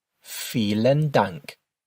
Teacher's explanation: the v's in German are pronounced with an f sound